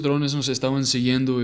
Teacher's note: The nos and estaban merged together a little bit, so be prepared for people to just say something like no estaban when speaking fluently.